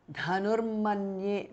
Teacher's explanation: Visarga changes to repha or r.